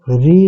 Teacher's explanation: ऋ स्वर का उच्चारण स्थान मूर्धा होता है।